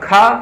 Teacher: दूसरा है महाप्राण। जिसमें अधिक वायु और ह जैसी ध्वनि निकले उसे क्या कहा जाता है? महाप्राण कहा जाता है। ये किसी भी वर्ण का दूसरा और चौथा वर्ण होता है।